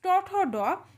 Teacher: আমাদের জিহোবা দাঁত এবং তালুর মাঝখানের যে জায়গাটি যেটিকে বলা হয় মূর্ধা সেখানে স্পর্শ করে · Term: মূর্ধন্য বর্ণ